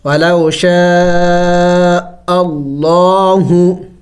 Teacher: جب لفظ اللہ سے پہلے زبر آ جائے یا پیش آ جائے تو پھر وہاں اس لفظ اللہ کو موٹا کر کے پڑھا جائے گا